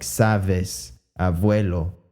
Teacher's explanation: a good number of the people pronounced it with a V, with a labiodental fricative, voiced labiodental fricative, instead of the approximant, which then makes it sound like sabes, abuelo.